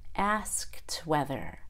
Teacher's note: Asked whether. I release the T.